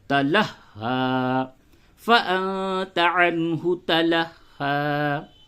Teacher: آگے آیت نمبر 10 فَأَنْتَ عَنْهُ تَلَهَّى، یہاں پہ چھوٹی ہا ہے اور اس پہ تشدید ہے، تو دیکھیں اس کی ادائیگی میں بہت ہی باریکی ہے، تَلَهَّى، تَلَهَّى، تشدید بھی ادا کرنا ہے اور بڑی ہا نہ ہونے پاوے، اگر آپ تشدید کی ادائیگی پہ زور دیتے ہیں تو کبھی کبھی ایسا ہوتا ہے کہ بڑی ہا نکلتی ہے، تو چھوٹی ہا نکالنا ہے